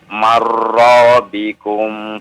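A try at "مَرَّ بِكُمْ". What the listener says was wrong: bukan mar ya mirbikum ya.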